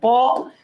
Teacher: প ঠোঁট দুইটা মিশতেছে, তার মানে ওষ্ঠধ্বনি